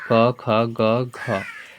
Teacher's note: कंठ से बोला जाता है